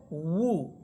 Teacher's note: ওয়াও পেশ উ, দুই ঠোঁট গোল করে বলতে হবে উ।